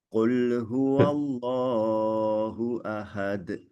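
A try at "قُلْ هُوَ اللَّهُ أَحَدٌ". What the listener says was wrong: Terlalu panjang lafaz jalalahnya.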